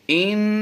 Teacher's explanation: इन, इस नून को यानी हमने नाक से अदा किया है, इस नून की आवाज़ जो हमने दी है नाक से दी है, इस गुन्ना को गुन्ना आनी कहते हैं।